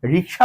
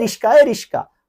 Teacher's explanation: লক্ষ্য করো শিক্ষার্থী বন্ধুরা, এখানে ক এবং স আছে, এই জায়গায় কিন্তু এই যে ক এবং স জায়গা চেঞ্জ করছে। আগে ক ছিল, পরে স, আর এই যে আগে স পরে ক হয়ে গেছে। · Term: ধ্বনি বিপর্যয়